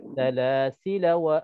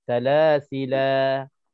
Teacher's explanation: Waktu wasal kita wasal dengan tanpa harakah, tanpa mad, dan waktu wakaf kita wakaf dengan mad.